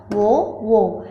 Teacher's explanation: ఇవి కంఠము ప్లస్ ఓష్టం నుండి పలుకుతాము అంటే కంఠము పెదవులు ఓష్టం అంటే పెదవులు ఇవి రెండిటి కలయికతో పలుకుతాము కాబట్టి వీటిని కంటోస్ట్యాలు అని అంటాము.